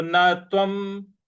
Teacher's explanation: व के ऊपर जो अनुस्वार है उसका उच्चारण हमको म ले आना है।